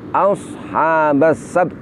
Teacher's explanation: Sedangkan ta kita tampakkan makhrajnya, yaitu dengan menempelkan ujung lidah kita pada gigi seri atas, kemudian juga menampakkan salah satu sifatnya, yaitu hamas, yaitu mengalirnya nafas